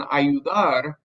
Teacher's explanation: the stress in ayudar is on the AR